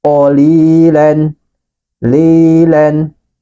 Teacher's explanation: Li panjangkan dua harokat sebab ada huruf ya sukun sebelumnya berharokat kasro